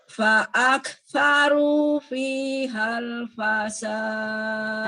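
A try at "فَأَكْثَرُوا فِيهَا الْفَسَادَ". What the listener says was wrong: Nah, untuk huruf fa terdengar agak lebih dari satu harokat. fa'aktsaru fihal fasad.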